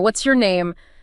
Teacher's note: Rising could suggest you've forgotten it, not that you never knew it. It's asking for confirmation or clarification of something that might already be known.